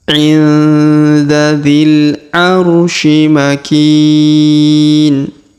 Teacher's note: Huruf ki kita panjangkan 2 harokat karena di depannya terdapat ya sukun.